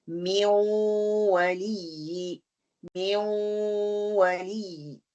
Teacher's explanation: اس میں نون کا تھوڑا سا ساؤنڈ آئے گا بیکاز اس میں ناقص ہو رہا ہے, اور تھوڑا سا اگلا لیٹر جو ہے اس کا سائن آئے گا, یا کا بھی ساؤنڈ آئے گا اور نون کا بھی ساؤنڈ آئے گا.